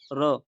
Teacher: जिस व्यंजन के उच्चारण के समय जीभ की नोक वायु से रगड़ खाकर कांपती है, उसे लुंठित व्यंजन कहते हैं।